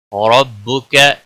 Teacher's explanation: را کو موٹا پڑا جائے گا، را زبر کی وجہ سے موٹا پڑا جائے گا